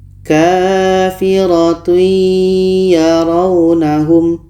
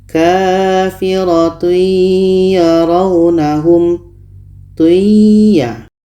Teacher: Kita masukkan bunyi tanwin kepada ya dan diiringi dengan dengung. Contoh kafiratun yarawnahum bunyi tanwin masuk ke ya. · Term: idgham bi gunnah